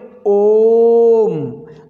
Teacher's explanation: बस बोले ओम, अच्छा नहीं लग रहा है ना, तो यहाँ पे प्लुत करेंगे, थोड़ा खींचेंगे स्वर को, और ये कितनी मात्राओं से उच्चारित होगा, 3 मात्राओं में लगने वाले समय के बराबर इसको ओ को हमें टाइम देना पड़ेगा।